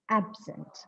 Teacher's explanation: when this word absent is used as an adjective the stress should fall on the first syllable see you can see that I have marked the stress with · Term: stress shifting